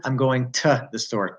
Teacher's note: It's only the preposition to that is sometimes pronounced as t-